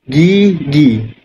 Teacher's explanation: Pita suara kita bergetar, lidah kita ni naik hingga hampir ke lelangit keras. Itu adalah huraian untuk vokal depan sempit.